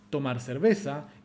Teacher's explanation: tomar no recibe el acento en el dominio de esta frase fonológica fin el acento caer sobre cerveza el el acento la palabra